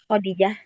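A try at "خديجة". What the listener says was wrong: Nah, ya Khadijah. Khadijah dinya yang panjang ya. Ya Khadijah. Bukannya kho yang panjang, jangan. Khadijah.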